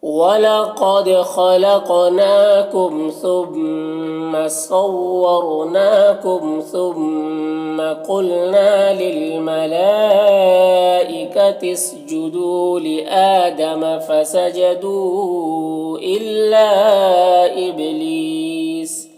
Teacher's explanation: قلقلہ میں سے ہے، لیس یہاں پر یا مدہ ہے اور وقف کی صورت میں سین کا زبر سکون سے بدل جائے گا تو پھر مد عارض وقفی ہوگا ، تو اس طرح سے پڑھیں گے۔ وَلَقَدْ خَلَقْنَاكُمْ ثُمَّ صَوَّرْنَاكُمْ